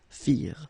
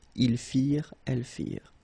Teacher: ending ENT for the plural, you don't pronounce it